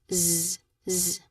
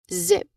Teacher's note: You create a distinct buzz. You should feel the vibration in your throat and a buzzing sensation behind your teeth. · The tongue and lip position is exactly the same for S, but this time you add your voice. Okay? You create a distinct buzz. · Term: buzzing sound